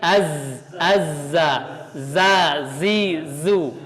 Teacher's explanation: Jadi kenapa dia dimasukkan ke dalam sifat sofir? Karena dia punya desisan khas ya.